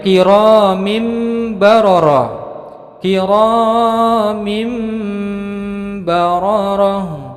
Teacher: meme-meme baroroh tanwin bertemu dengan Mba maka menjadi hukum bacaan iqlab dengan mendengung berbunyi huruf mim panjangnya dua harokat